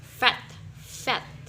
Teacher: obstruction between top teeth and bottom lip